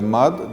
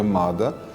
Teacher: расхождение между иронским и дегорским диалектами в устранении конечного «а», имеющее место в иронском и не проявляющееся в дегорском. То есть иронское «мад», дегорское «мада», иронское «фед», дегорское «фида», иронское «бенз», дегорское «бенза».